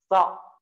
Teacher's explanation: Kalau so, ujung lidahnya turunin ya. Nanti maksudnya adalah ujung lidah, kepalanya sini, turunin ke gigi seri bawah.